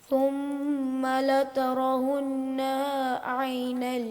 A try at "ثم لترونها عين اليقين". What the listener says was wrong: غنہ کو پورا کرو. ثم لترونها عین الیقین.